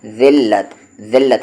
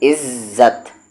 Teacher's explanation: जब आप ज़बान की नोक को सामने वाले ऊपर के दांतों से टच करेंगे तो वहाँ से निकलेगा आपका ज़ाल